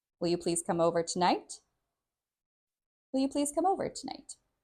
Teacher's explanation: because it's a question, the last word doesn't get as much stress